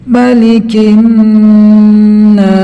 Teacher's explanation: Hukumnya gunnah. Cara bacanya dibaca dengan mendengung yang panjangnya seukuran 2 harokat atau 1 alif.